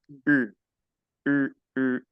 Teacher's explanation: el sonido de la u sostiene colocando los labios redondos y pronunciando una I